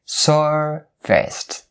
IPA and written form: ˈsɜːr-vɪst (Serviced)